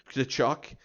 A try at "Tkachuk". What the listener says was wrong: Yeah, the T is silent. Kachuk.